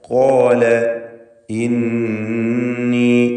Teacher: ഖാല ഇന്നി നൂൻ മുശദ്ദദയെ മണിക്കുക.